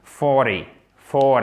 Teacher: le T est presque prononcé comme un D. C'est vraiment quasiment comme un D, ce qui nous donne 40, 40.